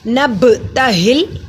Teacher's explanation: बा पे कलकला होगा, पा जज़म की सूरत में है।